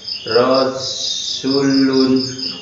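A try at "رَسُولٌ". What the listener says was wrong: Su-nya panjang apa pendek Pak? Kenapa pendek?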